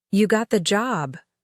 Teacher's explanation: Rising tone. Surprise. Excitement.